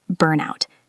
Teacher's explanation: Connect the N to the out.